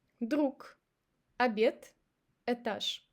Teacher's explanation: We say k instead of g, t instead of d, and sh instead of zh. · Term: devocalization